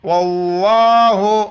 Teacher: رحمت اللہ جب وقف کریں گے رحمت اللہ واللہ اسی طرح لفظ اللہ سے پہلے واو پر زبر ہے تو لفظ اللہ موٹا کر کے پڑھیں گے